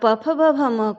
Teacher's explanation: अगर आप प फ ब भ म को बोलेंगे तो आपके दोनों होंठ यानी ओष्ठ, इन्हें ओष्ठ भी कहा जाता है, यानी होंठों से इनका उच्चारण होता है।